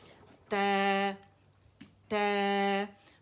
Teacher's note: یہ کنارے ہیں زبان کے، اور یہ والا والا حصہ ظاہر طرف اللسان، یہ جب جاتا ہے اوپر دانتوں کے، یہ جہاں پہ ہمارے گمز ہیں یہاں پہ مضبوطی سے لگتا ہے تو تا ادا ہوتا ہے، اور زبان باقی نیچے رہتی ہے، اٹھی ہوئی نہیں ہوگی